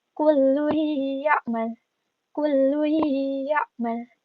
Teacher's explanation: Jadi ditekan dengung seakan-akan ada tasydid.